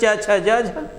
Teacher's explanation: अब यही पकड़ लिया गया कि उच्चारण करते समय जीवा ऊपर उठ करके ताल को स्पर्श करती है, और जब ताल को स्पर्श करती है तथा हवा को मुख विवर से बेटा, मुख का जो स्थान है उसके विवर से, मुख विवर से बाहर आने में संघर्ष का सामना करना पड़ता है। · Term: स्पर्श संघर्षी व्यंजन